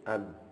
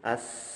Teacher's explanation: ketika sukun ab itu nafas tidak mengalir lagi, terhenti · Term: jahar